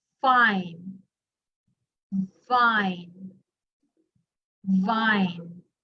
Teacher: So if you try to pronounce fine and vine, can you notice how your lower lip touches your upper teeth? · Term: labiodental